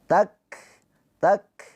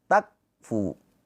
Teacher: Kaf ini dia punya sifat hamas ya. Hamas itu ada aliran nafas.